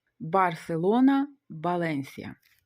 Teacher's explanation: На початку слова після паузи букви Б і Ув вимовляються як звук Б